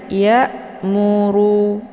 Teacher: posisi hamzahnya terletak di tenggorokan bagian bawah sejajar dengan huruful ha ya, sejajar dengan huruful ha besar.